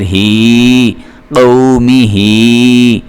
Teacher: ہا چونکہ حروف حلقی میں سے ہے اس لیے ہم نے اس کو بھاری کر کے اپنے حلق سے ادا کرنا ہوتا ہے